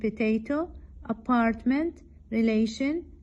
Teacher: the middle syllable is stressed in potato apartment relation